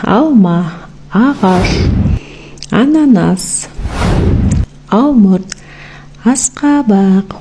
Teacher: А дыбысы ауыз қуысында айтылған кезде созылып, еркін айтылады. Ешқандай кедергісіз. Сол үшін де а дыбысы дауысты дыбыс.